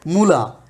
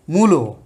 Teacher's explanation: তাহলে যারা মূলাকে মূলো বলে তারা কি করে, এই উয়ের কারণে আটাকে অনেকটা উয়ের কাছাকাছি মানে ও উচ্চারণ করে। ঠিক আছে, তাহলে যে প্রথম স্বরধ্বনির কারণে যেহেতু পরের স্বরটা প্রভাবিত হয়েছে, এই কারণে এটাকে আমরা বলবো হচ্ছে এটা একটা প্রগত স্বরসঙ্গতি।